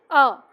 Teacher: जीभ का मध्य भाग काम करता है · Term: मध्य स्वर